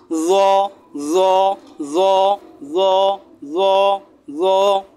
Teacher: জিহ্বার আগা তার বরাবর উপরে দাঁতের সাথে লাগিয়ে মোটা করে